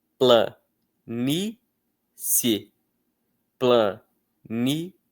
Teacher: Aqui nós também temos 2 sons vocálicos em que um é muito fraco, o outro é um pouco mais forte e os 2 são pronunciados no mesmo jato de voz.